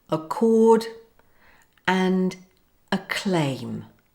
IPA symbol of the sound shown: k